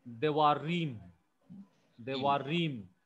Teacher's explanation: So that rim gets the stress. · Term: tonic